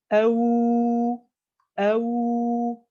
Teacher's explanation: Donc, en fait, on la prononce comme on prononce un waouh, on prononce un dhamma, c'est-à-dire qu'on a une action, la langue qui recule et les lèvres qui avancent bien vers l'avant. il faut vraiment déjà bien réaliser la dhamma, le waw en soi.